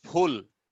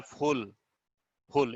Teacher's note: यहाँ ऊ का उच्चारण हो रहा है, फुल, फुल एक स्वर का उच्चारण हो रहा है, इसलिए 1 सिलेबिक हो गया।